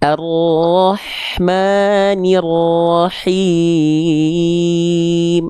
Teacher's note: Kalau tepat dia dilafalkan dari bagian tengah tenggorokan, maka karakter nafasnya akan berbisik. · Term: hak kecil